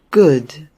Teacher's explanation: Não é U e nem é O. É um som entre essas duas vogais.